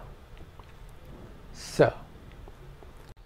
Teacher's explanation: And the final is the dental s